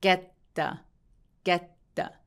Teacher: the는 th이기는 한데 쟤를 빠르게 발음했을 때 저 울림 있는 th 소리가 나거든요. 그래서 저 울림이 있는 th 발음은 d로 발음해도 되기 때문에 앞에 있는 t와 짝꿍이라고 볼 수 있죠.